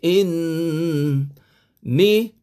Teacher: Nun sabdu wajib didengungkan sekadar dua harakat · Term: wajibul gunah